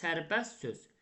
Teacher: Tələffüzdə t samiti düşdü.